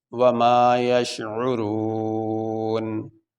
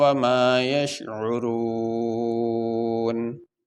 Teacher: وقف کرنے کی صورت میں یہ نون کے اوپر جو زبر ہے یہ نہیں پڑھا جائے گا